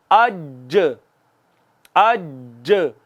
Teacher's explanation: وسط زبان اور مقابل کے تالو کے ملنے سے، یا وسط زبان اور اوپر کے تالو کے ملنے سے۔ وسط زبان، زبان کا درمیانی حصہ جب تالو اوپر والے اپنے تالو کے ساتھ لگتا ہے، وہاں سے جیم بھی ادا ہوتی ہے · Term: حروف شجریہ